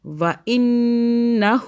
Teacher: نون مشدد, پھر یہاں پہ غنہ ہوگا 2 سیکنڈ کا. وَإِنَّهُ, ہو کو ہا الٹا پیش کو ہم نے ایک الف کے برابر ذرا سا کھینچ لیا